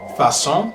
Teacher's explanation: The cedilla appears under the letter C and changes the pronunciation from a hard K sound to a soft S sound